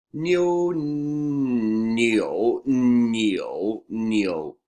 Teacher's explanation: Yo, right? It's yo, so it's nyo first tone, nyo, and then you bring down to your lowest vocal range for the third tone. So you say nyo, nyo, nyo, nyo, yue.